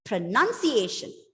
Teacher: See, the stress is on the second syllable.